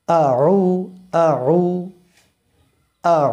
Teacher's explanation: এরপরে রয়েছে আইন আইনটা কন্ঠনালের মধ্য থেকে হয়। এখান থেকে হয় কন্ঠের মধ্য উচু জায়গা আছে এখান থেকে আইন উচ্চারিত হয়।